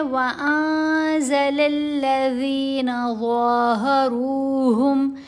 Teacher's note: ذال کی آواز کو ہم نے نرم پڑھنا ہے اور اس کی ادائیگی کے وقت زبان جو ہے وہ ہمارے دانتوں کے درمیان میں آئے گی، اوپر والے اور نیچے والے سامنے کے دانت نہیں جڑنے چاہیے، زبان اوپر والے دانتوں کو ہلکا سا نرمی سے ٹچ کرتی ہے۔ · نون کی آواز کو ناک میں چھپا کر بھی پڑھیں اور 2 حرکات کی مقدار اس کے اوپر ٹھہرا جائے، غنہ کیا جائے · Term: اخفا